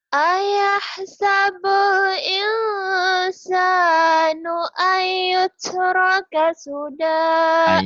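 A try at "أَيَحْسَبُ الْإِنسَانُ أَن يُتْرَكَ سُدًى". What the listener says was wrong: Ayah tas idghamnya kurang nyamber. Jadi idgham biguna itu seperti ditahan ya, ada ditahan.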